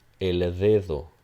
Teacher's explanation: So this is a voiced dental fricative. Similar to TH in the word the.